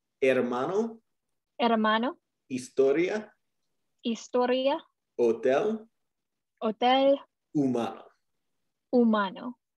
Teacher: la H in Spanish is typically silent, so you just pretend like it's not even there